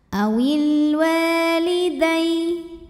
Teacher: karena ada Alif didahului baris fathah maka dibacanya panjang dua harakat